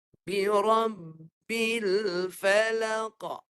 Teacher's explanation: Kalau huruf qaf dia ada satu sifat yang bukan semua huruf lain ada. Yang namanya qalqalah. Iaitu sifat memantul. Itu bila sampai huruf qaf boleh dipantul.